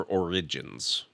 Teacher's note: A little more emphasis on the center syllable.